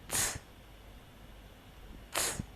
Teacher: Its position of articulation is the same as that of z, but it requires strong aspiration like this.